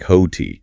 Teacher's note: You don't produce two separate T sounds. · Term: merging consonants